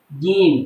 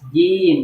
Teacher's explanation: jim itu letaknya ada di tengah-tengah lidah. Wasfuhu ya, di jim di tengah-tengah lidah bertemu dengan angin-angin.